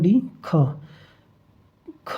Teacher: ख जो है अघोष महाप्राण हो जाएगा